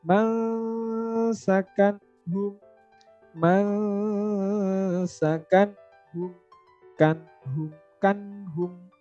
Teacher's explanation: Nunnya jelas, tanwinnya juga dibaca jelas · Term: izhar